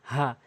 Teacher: এই ছোট হা হলকের শুরু থেকে উচ্চারণ হয় হা